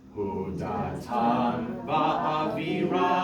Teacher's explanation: the ram has the accent, so make sure that we're holding off va'aviram.